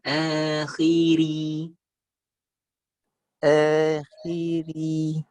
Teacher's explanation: Khi setengah, ri tipis sempurna.